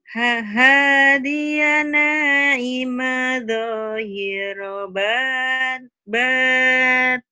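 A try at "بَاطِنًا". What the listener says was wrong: Batin. Kenapa nggak panjang? Karena lupa tobinya ketemu dua. Tadi di sini nih, Diko nih panjang nih.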